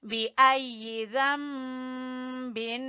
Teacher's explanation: यहाँ पे इक़लाब होगा, नून की जगह पे हमने मीम की आवाज निकालनी है